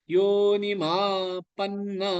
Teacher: யோ நெடில் எடுத்து நீ குறில் எடுத்து ஷார்ட்டா இருக்கணும்